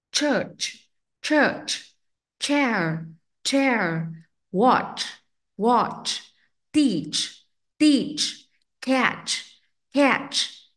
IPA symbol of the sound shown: tʃ